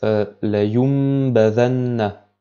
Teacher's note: passe directement sur la lettre ba, de sorte que en fait le nun sakina est prononcé comme si c'était un mime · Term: la règle de l'qalb